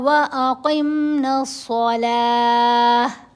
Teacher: قاف کو موٹا پڑھیں گے اور نون کو صاد سے ملانا ہے. الف اور لام دونوں خاموش رہیں گے.